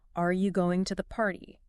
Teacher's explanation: your voice will naturally go up on the word party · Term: rise at the end